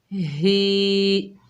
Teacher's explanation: ہا کے نیچے کھڑی زیر ہے، 1 الف کی مقدار کھینچ کر پڑھیں گے، ہا کو سینے سے ادا کریں گے، ہی۔ میم کے اوپر زبر ہے، بغیر کھینچے پڑھیں گے۔